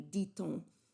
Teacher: For example, if you say on dit, the silent T at the end of D doesn't get pronounced, but when you follow up with a vowel, if you were to switch it around, it would be dit-on. You would pronounce the T all of a sudden. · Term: liaison